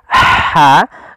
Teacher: dibaca wala talbisul haqqo tapi dia ha posisinya adalah kita bagaimana menyempurnakan huruf ha kecil yaitu kita mengeluarkan dari tengah tenggorokan kita ha disertai dengan nafas